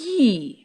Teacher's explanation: When you say yi, your tongue is raised to a position very close to the roof of your mouth. And it's similar to the position your tongue assumes when you pronounce vowel E. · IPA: /j/